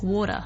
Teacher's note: American accent but I'll try to just give you an example in American English they might say it more like a d